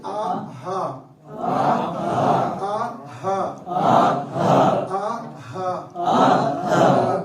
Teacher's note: شروع کے حلق سے ادا کریں گے